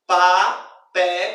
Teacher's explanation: Essa sílaba mais forte é justamente a ideia da sílaba tônica, que possui um acento tônico, uma pronúncia mais forte em relação a essa sílaba, lá, papelada, em relação às demais. A sílaba lá ela é pronunciada mais fortemente do que as demais sílabas componentes da palavra papelada. · A sílaba mais forte dessa palavra é a penúltima sílaba.